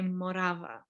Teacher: we do accentuate the second syllable